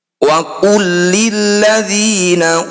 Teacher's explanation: Lam sukun bertemu lam disebut bacaan idgham mutamad silain. Bunyi lam pertama masukkan pada lam kedua tanpa dengung.